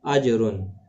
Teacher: جیم ساکن پر قلقلہ ہوگا